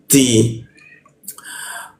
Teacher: ti ujung lidah bertemu gigi dia.